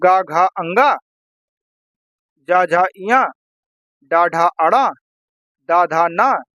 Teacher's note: हर वर्ग का तीसरा चौथा और पांचवा व्यंजन सघोष होता है